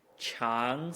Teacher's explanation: of a second tone into a first tone is super nice the second tone ends where the first tone starts